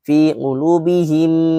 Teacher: Bacanya dua ketukan dengung. · Ditahan empat ketukan. 1 2 3 4. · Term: idgham mimi